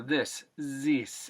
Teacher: in old romanian accents the th actually can sometimes be replaced by an s or a z sound